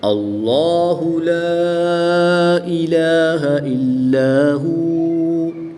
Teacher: جلالت اللہ عز و جل کے لام سے پہلے حرف پر زبر ہے تو اس لیے اس لام کو پر یعنی موٹا پڑھیں گے